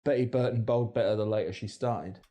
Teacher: flapping between vowels which we also hear in North American English